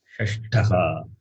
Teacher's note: Shash, Murdanya, Shash, that Tha is Mahaprana.